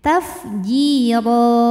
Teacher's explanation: ro hukumnya Mad iwad karena ada harakat tanwin fathah yang diberhentikan cara bacanya dipanjangkan rnya dua harakat tanpa bunyi n